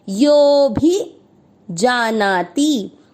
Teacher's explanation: आपको यो की मात्रा को लंबा खींचना है और खींचते हुए अवग्रह के बाद जो भी है उसको बोलना है। भी को नहीं खींचना क्योंकि मात्रा छोटी है।